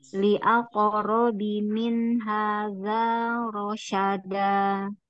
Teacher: za mahrotnya ujung lidah tempel dari gigi seri depan